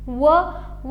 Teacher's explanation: दाताला स्पर्श होतो आणि ओठांचा वापर केला जातो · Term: दंतष्ट